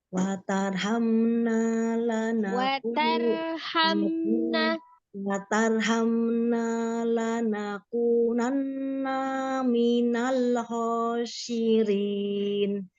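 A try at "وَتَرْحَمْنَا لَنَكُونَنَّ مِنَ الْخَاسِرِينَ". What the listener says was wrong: Nah, kadang gini, ada kependekan. Watarhamna, harusan ditahan dulu.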